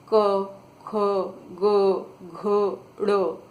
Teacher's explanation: आप ध्यान से देखेंगे तो यह व्यंजन गले से निकल रहे हैं तो इनको कंठ गले को कंठ भी बोलते हैं इसीलिए इन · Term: कंठ व्यंजन